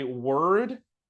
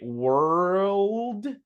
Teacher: they say word twice because it's hard to put the L between the R and the D